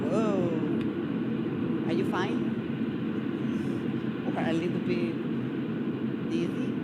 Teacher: This is the curve of intonation. It's 164 hertz, meaning that it's a high pitch, it's a high tone, it's a sing-song